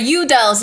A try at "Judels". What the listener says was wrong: The Icelander and you would say Udels, but it's Judels.